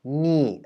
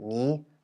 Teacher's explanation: ni and ni, so the falling and high tone of the more or less similar word